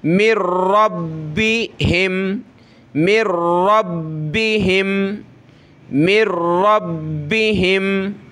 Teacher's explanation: नून साकिन के बाद जो वर्ड है जिस पर तशदीद हो तो वहाँ हमने नून साकिन को नहीं पढ़ना होता। मीम के बाद डायरेक्ट हम रा पढ़ेंगे, रा के बाद बा पढ़ेंगे, ठीक है।